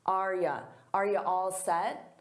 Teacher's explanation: Notice that the U becomes more of an unstressed ya or ya. So, it's a very subtle difference.